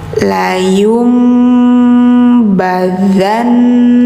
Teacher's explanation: Jadi bacanya jangan layun, layum, langsung ke mim ya. Setiap ada nun sukun yang kedepannya ada huruf ba, maka nunnya gantikan ke suara mim teman-teman. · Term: iklab